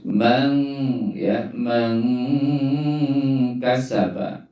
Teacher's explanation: tajwidnya itu normati ketemu Kaf itu di bacanya ikhfa ya ikfatinya samar-samar pengucapannya antara izhar dan idgham